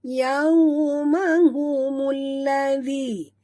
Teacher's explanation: Mul di sini masukkan bunyi mim terus ke dalam lam disertai dengan tekan ya.